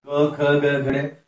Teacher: जो कंठे वर्ण है उससे क वर्ग निकलता है